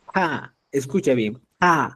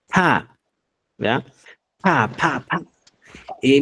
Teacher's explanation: Es un sonido bilabial porque al momento de producir el sonido, ambos labios superior e inferior se unen generando el estancamiento de aire o obstruyendo la salida de aire de la cavidad bucal.